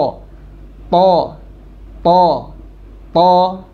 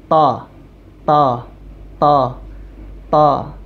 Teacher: karena tidak terangkat maka tidak sempurna begitulah kemudian hurf th diucapkan selain Dia menempelkan ujung lidahnya dengan pangkal gigi seri dia juga mengangkat bagian pangkal lisannya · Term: huruf TH